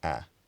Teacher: having a front and not quite lowest but still fairly low trap vowel, so something like a.